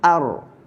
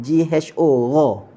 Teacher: Gerak ataupun getar. Cuma getaran dan gerakan huruf ra yang hujung itu dia gerak je, bukan gerak banyak. Gerak dia sekali gerak je macam tu je. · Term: takrir